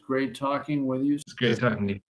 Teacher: since the word great and Talking end and begin in the same sound the t is only pronounced one time the first T may also be pronounced as a gladle t